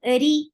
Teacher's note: Nan, na, na is 2 count long. Ri, ra is light here because whenever ra is with kasra, it is light.